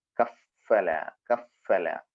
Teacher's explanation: അതുപോലെ കഫല, താഴെ ചുണ്ടും മേലെ മുൻപല്ലുകളുടെ തലയും. താഴെ ചുണ്ട് മേലെ മുൻപല്ലുകളുടെ തലയിൽ ടച്ച് ചെയ്യുക